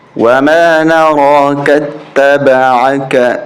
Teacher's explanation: کاف کو تا کے ساتھ ملائیں گے، یہ الف نہیں پڑھیں گے